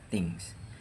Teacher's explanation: ujung lidah diletakkan di antara gigi atas dan gigi bawah atau menyentuh pinggiran gigi · Lihat posisi lidah sedikit menjulur ke depan gigi. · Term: lingua dental